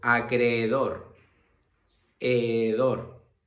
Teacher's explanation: Los hiatos es un fenómeno que se puede producir dentro de una palabra en la que se encuentran dos vocales juntas, pero forman sílabas diferentes